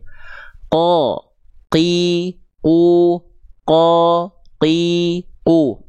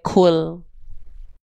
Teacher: Karena kalau bocor nafasnya seperti itu pada huruf qof, sedangkan qof sifatnya adalah jahr tertahan nafas